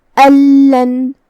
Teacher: لام حروف الادغام بغیر غنہ میں سے ہے تو ہم یہ نون کو لام میں داخل کر کے بغیر غنہ سے لیکن تشدید کے ساتھ یہ حکم کو ادا کریں گے